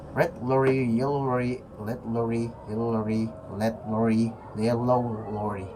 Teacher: Fokus R. Lidah tidak menyentuh langit-langit sedikit melengkung ke belakang. · Lidah seperti menggulung ke belakang tanpa menyentuh apapun. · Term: Retroflex